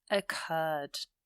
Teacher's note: that emphasis is on the second syllable with the R, so we double the R and add the ed.